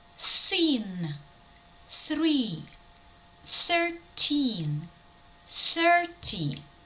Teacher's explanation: ми маємо глухий звук ф